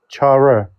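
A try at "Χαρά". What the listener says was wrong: Not r. Like your tongue should be somewhere to the middle of the roof of your mouth. Chara.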